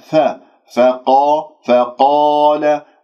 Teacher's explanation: الملائكة فقال، تي تي تاء المربوطة اكسرها جيدا لا تختلس الكسرات، فقال أنبئوني، فقا لا تقول فقال، تفخم الفاء بسبب مجاورتها للقاف المفخمة مرتبة أولى لأنها مفتوحة بعدها ألف، فأنت تنطق الفاء فا فقا فقال، ولا تقول فقال، لا تكور الشفاه، هذا خطأ، فانتبهوا بارك الله فيكم.